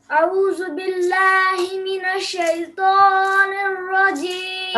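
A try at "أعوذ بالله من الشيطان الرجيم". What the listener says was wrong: ابھی بھی لمبا ہو رہا ہے، پتہ ہے آپ کو، من الشیطان ایسے نہیں، من الشیطان الرجیم.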